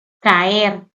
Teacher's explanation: es una palabra que tiene dos sílabas Y en este caso las dos vocales que están produciendo el iato son abiertas tanto la a como la e